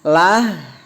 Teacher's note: Lah itu dia tarkik tipis ya, tidak terangkat lidahnya